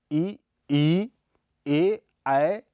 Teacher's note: इ ई ए ऐ के उच्चारण में जीभ के अगले हिस्से को उठाया जाता है इसलिए इन्हें अग्र स्वर भी कहा जाता है